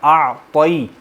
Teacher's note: پھر طا کو موٹا پڑھیں گے